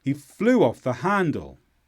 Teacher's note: the stress is on flew and han.